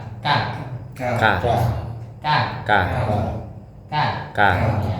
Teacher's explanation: huruf Kaf sama tempatnya di Pangka lidah ya Pangka lidah tapi Bagian Yang kerasnya agak depan k k k k k k k ini satu Q ka